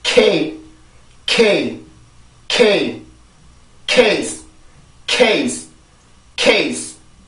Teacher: 요 소리는 연구개 폐쇄음이죠. 혀 뒷부분을 이용해서 연구개를 막아서 공기를 막아주는 건데 요렇게 공기를 막는데 지금 강세음절이죠.